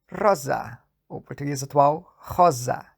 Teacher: Então virou Z, ou seja, vozeou. Antes as pregas vocais não vibravam, depois elas passaram a vibrar. E o S longo virou só um S curto. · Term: vozeamento de S intervocálico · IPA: [z̺]